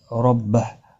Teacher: रा ज़बर की वजह से पुर पढ़ा जाएगा और हा साकिन पढ़ा जाएगा वक़फ़ की सूरत में।